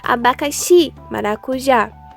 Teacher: um exemplo de palavra oxítona abacaxi maracujá como se pode observar a intensidade da palavra está na última sílaba dela